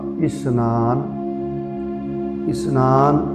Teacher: ਇਸਨਾਨ ਪੈਰ ਚ ਬਿੰਦੀ ਨਹੀਂ ਲਾਉਣੀ ਇਸ਼ਨਾਨ ਨਹੀਂ ਕਹਿਣਾ